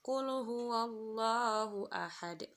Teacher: Qul huwallahu ahad, yaitu huruf dal dhammah tain pada akhir kalimat. Cara membacanya itu lebih jelas dan memantul. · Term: qalqalah kubra